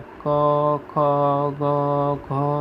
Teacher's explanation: તમે જોજો ક બોલવામાં ક્યાંય હોઠ નહીં અડાડવો પડે, જીભને તાળવે અડાડવી નહીં પડે એટલે એને કંઠ્ય કહેવામાં આવે.